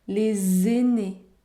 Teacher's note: Les aînés, la liaison est obligatoire, vous devez prononcer le son z.